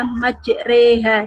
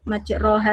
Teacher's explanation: majreha itu kalau kita melihat tulisannya Itu kan majroha karena dibaca imalah yaitu memiringkan atau mencondongkan huruf dari Fattah tegas roh berarti dibaca enak dibaca majreha di bukan majroha lagi